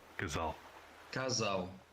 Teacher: Note that between vowels it's z in both European and Brazilian accents.